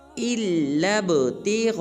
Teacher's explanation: حمزہ کو لام مشدد کے ساتھ ملائیں گے، پھر لام کو با ساکن کے ساتھ ملا کر با کو قلقلہ کریں گے، یعنی کہ با کو ہلائیں گے۔ اس کے بعد غین کے بعد جو الف ہے اس کے اوپر مد ہے، لہٰذا غین کو 5 الف مقدار لمبا کریں گے۔